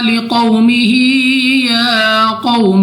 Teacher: واو ساکن سے پہلے زبر واو لین، بغیر کھینچے بغیر جھٹکا دیے جلدی سے پڑھیں گے. یا کو بھی 2 سیکنڈ تک لمبا کرنا ہے.